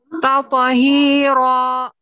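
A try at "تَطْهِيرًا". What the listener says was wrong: Ini ta masih tebal. Tatahira. Ta, ta. Kita bilang ta huruf tibis. Ta huruf infitah. Ta, ta. Bukan ta. Tatahira. Tatahira. Tatahira.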